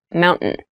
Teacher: when you pronounce this word in fast speech, it sounds like mountain. The T sound is reduced.